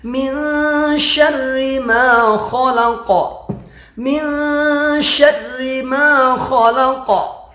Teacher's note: Ikhfa artinya menyembunyikan. Jadi disembunyikan huruf nunnya, jadi nggak kedengaran nunnya itu.